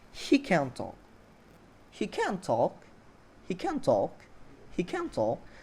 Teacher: Jadi di 2 syllable terakhir di stress. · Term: sentence stressing